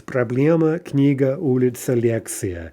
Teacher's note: The stress in the singular is not on the ending. Okay, so it's stem stressed, and in feminine nouns like that, we can be pretty much certain the stress is going to remain on the stem everywhere, including in the plural.